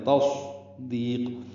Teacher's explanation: گلائی سے ادا کریں گے، تا کو صاد سے ملانا ہے، صاد ساکن ہے، پر پڑھیں گے، موٹا پڑھیں گے · دال کو لمبا کریں گے، دو حرکات، یہ یا مدہ ہے